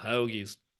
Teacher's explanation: there's definitely a kind of elongated vowel sound